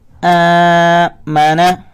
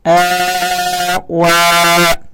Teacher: اور جس الفاظ کے اوپر کھڑی زبر ہے اسے ہم نے لمبا کر کے بھی پڑھنا ہوتا ہے. تو اسے پڑھیں گے حمزہ کھڑی زبر آ.